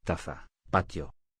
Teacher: Representa el sonido oclusivo alveolar.